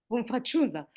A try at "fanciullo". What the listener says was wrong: Fanciullo with an O. Fanciulla is female Fanciullo.